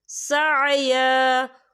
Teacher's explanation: وقف کی صورت میں ایک زبر پڑھا جائے گا، دو زبر نہیں پڑھے جائیں گے۔